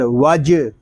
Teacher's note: جیم ساکن ہے، اس میں کلکلا خوب ظاہر ہوگا